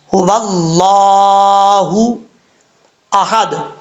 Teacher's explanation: اللہ کے نام سے پہلے زبر ہو تو اللہ کا نام پر پڑھا جاتا ہے، پر اس سے مراد یعنی موٹا پڑھا جاتا ہے۔ اب یہاں پر اللہ کے نام سے پہلے زبر ہے تو اللہ کا نام موٹا پڑھا جائے گا